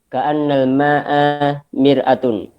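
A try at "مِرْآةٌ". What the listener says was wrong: Itu salah ya, harusnya gimana? Kan mir'atun. Alifnya dipanjangkan, mir'atun, artinya kan cermin.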